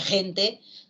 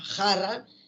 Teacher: El fonema fricativo velar sordo. En la escritura, este fonema se representa con la letra G en la palabra gente, con la letra J en la palabra jarra y con X en la palabra México, ¿ya?